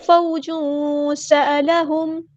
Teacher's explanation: واو لین آ گئی ہے نرمی سے موڑیں گے